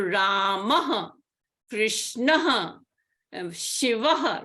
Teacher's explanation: takes the sound of the consonant h plus the swara before the Visarga. For example, in the word Ramaha, the vowel, the swara before the Visarga is the vowel a.